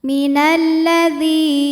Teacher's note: alif lam menghadapi huruf syamsiyah yaitu lam, maka alif lam tidak kita baca. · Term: alif lam syamsiyah